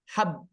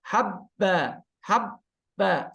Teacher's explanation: dia kan jaher sama syidah kan dua-duanya tertahan baik dari segi nafas maupun dari segi bunyi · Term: ba sukun